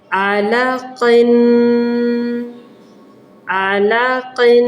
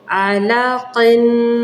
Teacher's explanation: تنوین پہ غنہ ہوگا جسے 2-3 سیکنڈ کے لیے ناک میں رکھیں